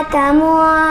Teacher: تنوین یا نون ساکن کی آواز کو ایک الف کے برابر ناک میں چھپا کر پڑھیں گے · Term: اخفا